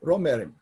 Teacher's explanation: Nasalization, the M and the B combine to become M, so the B isn't pronounced anymore